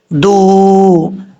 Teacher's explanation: دال واو پیش دو. دال کا مخرج زبان کی نوک اوپر والے دانتوں کی جڑوں سے لگے تو دال پڑھا جاتا ہے. واو مدہ ہے، 1 الف کی مقدار، اس کو لمبا کر کے پڑھیں گے.